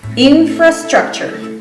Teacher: the T-U-R-E at the end of the word is pronounced ch, chur, all right?